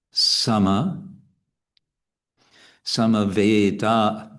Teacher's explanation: we have two short syllables because they're followed by single consonants.